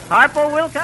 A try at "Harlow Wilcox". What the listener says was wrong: No, Harlow Wilcox. no, Harlow. L, not P.